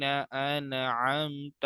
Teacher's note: नून साकिन यहाँ पर गुन्ना नहीं होगा बल्कि यहाँ पे इजहार हल्की हो रहा है। यानी नून साकिन और तनवीन के बाद हुरूफ हल्की में से कुछ आ रहा है।